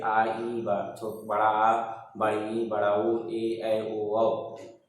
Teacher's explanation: जिन स्वरों को पढ़ने, बोलने में या उच्चारण करने में हर्ष स्वर से 2 गुना समय लगेगा, वो दीर्घ स्वर कहलाएगा